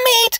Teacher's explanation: you could try to make it less constricted and a bit more breathy